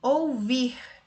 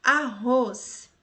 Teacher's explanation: Essas palavras possuem a última sílaba como mais forte e não a penúltima